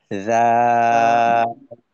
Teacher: জিহ্বার আগা সামনের উপরের দুই দাঁতের আগার সঙ্গে লেগে শুরুটা হয় আর কি। যেমন রা, এভাবে।